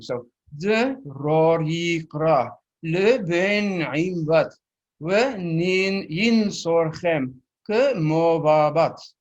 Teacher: if I pronounce the short syllables a little higher than the long ones, then you hear the rhyme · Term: pattern of long and short